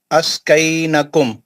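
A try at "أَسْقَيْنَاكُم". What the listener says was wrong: ना नून पे खड़ा जबर है ना.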